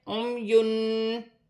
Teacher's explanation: یہاں 2 پیش کی تنوین پر اخفا ہوگا